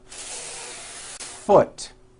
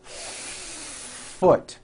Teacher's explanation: they still keep the F very short and they don't create air friction. Therefore, you do not hear the F clearly and it sounds like foot. · Hold the F sound for the first full beat.